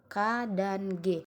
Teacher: gusi misalnya t dan D yang keempat eh konsonan dorsofelar adalah bunyi yang terjadi dengan cara menempelkan pangkal lidah ke langit-langit lunak